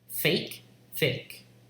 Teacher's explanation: But in Californian or many other dialects, this will be realized as a monophthong fake.